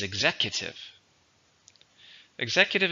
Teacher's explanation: how many syllables executive four stresses on the second syllable